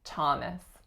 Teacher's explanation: It is that it is one of those rare exceptions in which the letters TH do not produce a th or a v, but actually just make an aspirated t sound to give us Thomas.